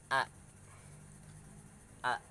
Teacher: huruf a atau hamzah, yang bisa disebut hamzah, yaitu tenggorokan yang paling dalam juga.